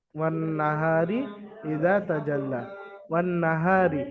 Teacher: নুনকে এক আলিফ পরিমাণ গুন্না সহ পড়তে হবে